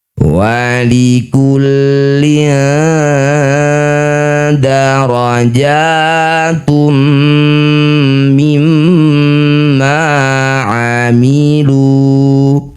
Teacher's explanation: Bunyi kasrah tanwin dengungkan dua harakat. Ketika dengung lisannya sudah bersiap bunyikan dal. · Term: ikhfa aqrab